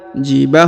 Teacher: huruf ba dipanjangkan 2 harokat karena di depannya terdapat alif